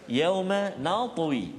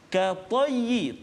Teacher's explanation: Lepas tu kita jumpa pula ka tayyi, ta yang berbaris fathah, ta yang berbaris di atas, maka berbezalah tingkatan ketebalan dia. Yang qalqalah ataupun yang mati ataupun sukun itu kuranglah sedikit berbanding dengan ta yang hidup barisnya pada atas. Manakala ayat yang ke-29, contoh tu surah Al-Hajj, ayat yang ke-29, ayat yang ke-26, iaitu kalimah wa tahhir baitiya lit-taifina wal qaimin.